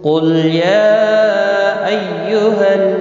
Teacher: یا مد منفصل ہے، 3 الف کے برابر کھینچ کر پڑھیں گے، لام ساکن کو ہلانا نہیں۔